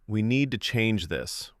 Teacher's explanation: I said, We need to change this, with a flat tone.